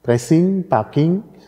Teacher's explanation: das velare N, ne, kommt in so Wörtern vor wie Pressing und Parking, also immer ING geschrieben, das G wird dann nicht besonders ausgesprochen